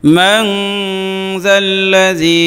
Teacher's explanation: যেহেতু নুন সাকিনের পরে জাল আসছে এই জন্য ইখফা হবে এখানে, এই জন্য এই মান গুণনা হবে